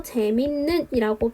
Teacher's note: 재밌는 같은 경우에는 일단 이 쌍시옷부터 디귿으로 평파열음화를 시켜주어야겠죠. 그리고 뒤에 있는 니은의 영향을 받아서 재밌는이라고 비음화가 일어납니다